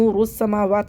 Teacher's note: یہ را کو موٹا پڑھنا ہے اور سین کو سیٹی کے ساتھ پڑھنا ہے